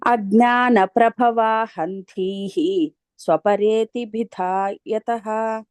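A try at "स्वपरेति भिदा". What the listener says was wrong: ఇందాల భియా అని చదివారు, భిదా అని. అలాగే ఇక్కడ అజ్ఞాన ప్రభవా హంధీ హంధీ స్వపరేతి. ధీకి ఒకసారి ఆ పొట్టలో చుక్క కనిపిస్తుంటుంది.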